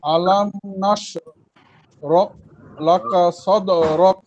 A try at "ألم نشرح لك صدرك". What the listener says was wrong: জি মাশাআল্লাহ, ঠিক আছে।